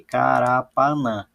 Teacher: Dessas 4 sílabas, a mais forte, a sílaba tônica, é o nã. Então, vejam que a sílaba tônica aqui é a última. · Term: oxítona